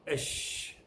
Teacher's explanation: unit 16 the voiceless palatal fricative